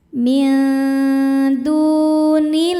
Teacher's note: Cara bacanya huruf dal ini kita panjangkan dua harakat.